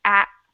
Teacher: you stop it and you close your throat at, instead of letting it come to the tip of your mouth.